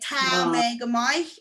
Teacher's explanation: the Belfast accent, we tend to ignore that fada